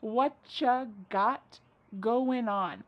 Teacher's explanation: Whatcha is what plus you. You becomes cha.